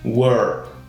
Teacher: E no final você vai mudar e colocar apenas esse som de R meio caipira, né?